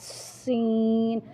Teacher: سا اور سین کو سیٹی کی آواز میں پڑھیں گے